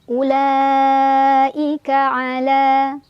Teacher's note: La mad tabi'i karena ada fathah berdiri di atas huruf lam, dibaca panjang 2 harokat.